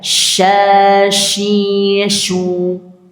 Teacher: Shin, jim, dan ya. Ada di wastul lisan atau pertengahan lisan.